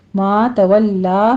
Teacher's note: ما تولا میں لام کے پر تشدید ادا کرتے ہوئے فتح قائمہ ہے، 2 کاؤنٹ کیجئے